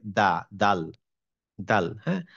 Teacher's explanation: এই দা টা হচ্ছে জীবটা আমার দাঁতের ভিতরের দিকে লাগে